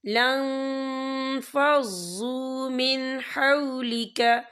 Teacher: فَظًّا غَلِيظَ الْقَلْبِ لَانفَضُّوا مِنْ حَوْلِكَ، یا دیکھیں لن، یہاں نون ساکن ہے، نون ساکن کے بعد جو ہے فا آ رہا ہے، اور فا جو ہے اکفا کا ورڈ ہے، تو ہم یہاں اکفا کریں گے، نون ساکن کی آواز کو ناک میں چھپائیں گے